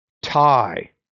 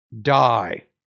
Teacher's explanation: the T is a voiceless consonant and the D is a voice consonant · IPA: /t/ vs. /d/